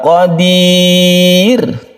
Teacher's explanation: Sukun ro yang sebelumnya itu kasro maka dibaca tipis. Oleh karena itu ketika kita mewakafkan ini dibaca tipis roknya. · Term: tarqiq